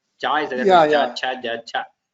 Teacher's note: Cha, the back of the tongue raises and touches the talu.